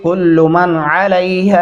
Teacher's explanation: कुल्लु मन अलैहा, यहाँ पे अक्सर एक गलती जो सबसे पहले लोग करते हैं, कुल्लू मन पढ़ते। कुल्लू आप लाम को लंबा नहीं कर सकते वरना ये बहुत बड़ी गलती है